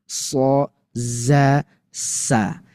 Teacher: harus disofirkan desis dulu baru bunyi sho, sa za. Enggak boleh langsung so za saak bisa harus ada desis dulu. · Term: shofir